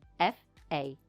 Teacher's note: We say fasten like this, fasten, no T sound.